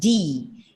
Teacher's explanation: d is a voiced plosive you have to touch the tip of your tongue behind your teeth and say d